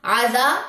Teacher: عذا الف خالی ما قبل زبر، الف مد ہے، 2 کاؤنٹس لمبا کریں.